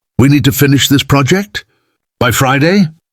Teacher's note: upspeak, ending statements with a rising inflection